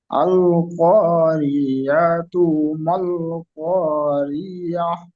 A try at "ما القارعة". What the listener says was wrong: মাল কারিয়াহ, ইয়া মতন হয়ে যাচ্ছে। মাল কারিআহ। কারিআহ, এখানে র টান হবে না, র টান হবে না। মাল কারিআহ। মাল কারি, রি টান হয়ে যাচ্ছে। মাল কারিআহ।